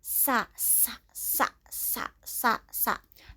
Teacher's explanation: Sin, yang bersifat hamas, maka suara sofirnya seperti ular.